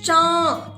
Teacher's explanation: अनुनासिक कहते हैं इसको। और इसको बोलने के लिए नाक और मुंह दोनों की जरूरत पड़ती है। दोनों से ही इसकी आवाज निकलती है।